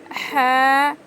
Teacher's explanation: حلق کے بیچ کے حصے سے ح ادا ہوتا ہے